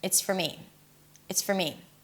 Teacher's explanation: when the word for is unstressed, and that's usually the case, then the for is reduced to fur, fur, fur. And yes, it sounds just like the word fur, like a dog's fur, fur, fur. · the word for is reduced to fur, and I connect everything together. It's for me.